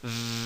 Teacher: Some sounds that are called fricatives, and that means there's friction, but the air doesn't stop completely. And these are sounds that you can pronounce for a long time.